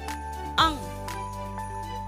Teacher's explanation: से अंग तो इस तरह से नासिका से इसका उच्चारण स्थान नासिका इसका उच्चारण स्थान है और मुख में वायु अवरोध उत्पन्न करती है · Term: अनुस्वार